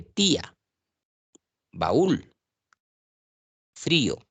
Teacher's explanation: Se separa una vocal abierta de una cerrada siempre en cuando la cerrada suene más fuerte, es decir, lleve tilde. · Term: hiato acentual